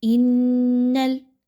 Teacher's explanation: نون مشدد کا غنہ کیجیے، آواز کو ناک میں لے کے جائیے